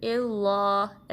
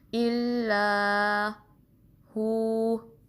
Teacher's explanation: लाम को बारीक पढ़ना है, मोटा नहीं, यानी इल्लाह ऐसा नहीं, बल्कि इल्ला हु।